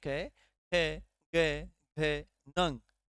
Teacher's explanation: क वर्ग का जो स्पर्श होता है वह कंठ में होता है